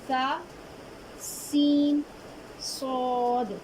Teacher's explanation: सा को नरमी से बारीक पढ़ेंगे, सीन को सख्ती से बारीक पढ़ेंगे और सौद को सख्ती से मोटा पढ़ेंगे